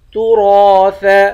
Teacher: را کو ایک الف کی مقدار کھینچ کر پڑھیں گے، را کو موٹا پڑھیں گے